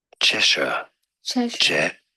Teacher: In British English, it is said as Cheshire. Cheshire. Stress on the first syllable.